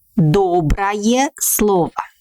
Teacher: We write «ое», but pronounce «ая», like доброе слово, because this ending is unstressed.